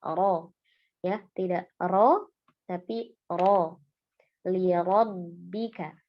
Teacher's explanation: huruf ro yang di sini fathah juga ya dibaca tafkhim atau tebal karena dia berharakat fathah